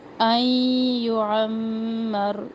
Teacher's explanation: ان یعمر یہاں پر بھی ادغام مع الغنہ، میم مشدد پر بھی غنہ کرے